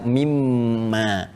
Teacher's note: Kalau kita sambungkan min dengan ma karena ada hukum idgham di sini ya, idgham bighunah, maka kita baca mimma.